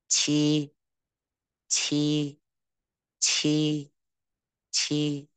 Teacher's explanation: Q âm này bật hơi bật hơi ra